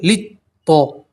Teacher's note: تو طا میں بھی آپ ایک الف کے برابر کھینچیں گے، یہ جو لام کے بعد جو دوسرا لام ہے وہ نہیں پڑھیں گے، ٹھیک ہے، اس لام کو سیدھا طا سے ملائیں گے